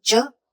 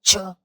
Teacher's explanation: च में जब बोलेंगे च तो हवा मुंह से नहीं निकलेगी और जब च के साथ हवा निकालेंगे छ तो वो खुद ही छ बन जाएगा